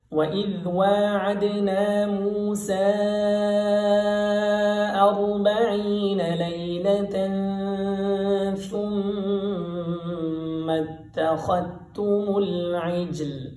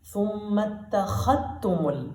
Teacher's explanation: ثم اتخذتم العجل یہاں ذال کا تا میں ادغام کر دیتے ہیں. یعنی خا کو ڈائریکٹ سیدھا تا کے ساتھ ملاتے ہیں